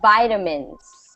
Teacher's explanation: it's between a t and D sound